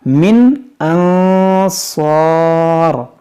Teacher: نون ساکن کے بعد صاد حروف اخفا ہے تو یہاں پر ہم غنہ کریں گے